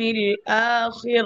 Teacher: কাসরার পরে জেরের পরে র সুকুন হয়েছে, আপনি স্টপ করছেন, জি থামছেন, র সুকুন হয়ে গেছে, র পাতলা হবে।